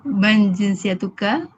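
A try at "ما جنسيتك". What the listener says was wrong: Bukan man tau, tapi ma.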